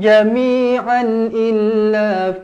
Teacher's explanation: La yuqatilunakum jami'an illa, tanwin selari bertemu dengan hamzah, izharu halqi, dibaca jelas dan terang